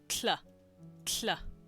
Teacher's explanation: And it's a lateral combo. It's a T and the hl sound. So obviously it's the kla, kla.